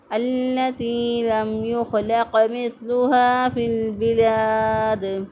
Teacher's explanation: دال جو ہے وقف کی صورت میں 3 الف کے برابر اس کو کھینچ کے پڑھیں گے